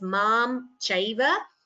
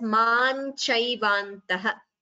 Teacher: Here, mam chaiva. So you could either chant the anuswara completely as mam chaiva, or you can chant it as man chaivantaha. So combining the sandhi, it becomes man chaiva.